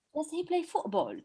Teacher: So play was more pronounced than does.